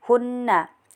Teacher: Kemudian di sini juga terdapat hukum gunah karena nun bertasjid di karena terdapat nun bertasjid jadi baca dengung dan ditekan juga tiga harakat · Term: hukum gunnah